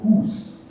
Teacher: The older long vowels oo and e are preserved in Alsatian and Swiss